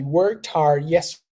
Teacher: you see how it sounds I barely pronounced the Ed